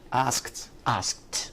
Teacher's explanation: So here the end of ask is k, k, and k is a voiceless sound.